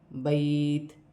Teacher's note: وقف کی صورت میں زیر گر جائے گی اور تا ساکن ہو جائے گی